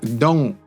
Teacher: the front N, actually becomes at the back, like in sing · And the T becomes glottalized.